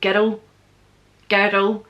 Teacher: when we say girl and world, it's almost like two syllables because we're not saying girl all in the one-y, we're saying girl, girl.